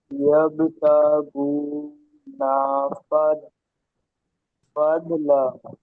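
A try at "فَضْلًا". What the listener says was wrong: এটা দোয়াত আছে, এটা দাল না, দোয়াত আছে। ফাদলা।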